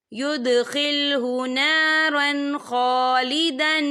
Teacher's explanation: या देखिए युदखिलहु नारन, रा के पर तनवीन है, तनवीन के बाद जो है खा आ रहा है, और खा जो है रूफ़े हल्की का वर्ड है, तो हम यहाँ इजहार करेंगे। हम इसे बिना गुन्ने के पढ़ेंगे।